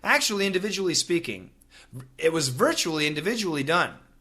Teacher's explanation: if a typical American is saying these words very quickly, the chuly and the julie are going to sound basically the same.